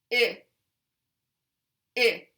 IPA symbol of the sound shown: ɪ